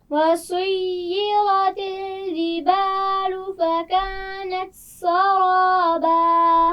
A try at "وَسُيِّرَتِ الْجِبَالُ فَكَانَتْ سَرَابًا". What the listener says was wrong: جیم کا مخرج واضح کیجئے. جبالو. پھر پڑھیے.